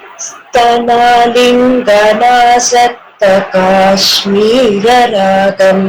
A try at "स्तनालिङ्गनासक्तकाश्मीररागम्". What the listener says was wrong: Very nice.